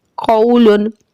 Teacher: कौलुन, यहाँ पे भी वाव लीन और तनवीन है, मारूफ ही पढ़ा जाएगा। तनवीन के आखिर में नून साकिन की आवाज आती है।